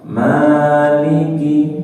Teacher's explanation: Ma panjang panjang dua harakat malikiiki perhatikan kinnya pendek tidak dibaca panjang tidak Maliki malikiu Maliki